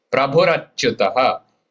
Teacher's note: Prabhur till halantara and then achyutah, two parts coming together.